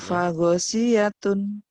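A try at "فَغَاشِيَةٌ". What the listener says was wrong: Pagosiyatun, tun dari mana tun?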